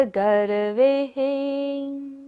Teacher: गर्वे पर विसर्ग है, सारी सांस का विसर्जन करना है।